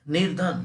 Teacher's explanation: विसर्ग का आधा र में परिवर्तन